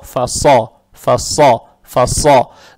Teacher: далее стоит буква «сад» твердая с фатхой, фатха приобретает оттенок «о»